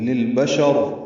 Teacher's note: للبشر، لام ساکن پہ اظہار ہے، شین کو را سے ملا دیں گے، وقفاً را پر ہوگی. للبشر، ملانے کی صورت میں را باریک ہے کیونکہ زیر ہے